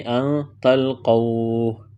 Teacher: نون ساکن کے بعد تا ہے، اخفا کریں گے · ان تلقوہ قاف کو موٹا کرنا ہے، واولین ہے، کھینچنا نہیں ہے، وقف کریں گے، ہا کو ساکن کریں گے